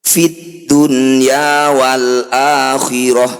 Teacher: nun sukun bertemu ya di satu kata disebut bacaan izhar wajib atau izhar mutlak cara bacanya nya bunyi nun sukun dibaca jelas tanpa dengung